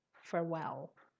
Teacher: the stress is on the second syllable and there are two l's farewell okay go on and the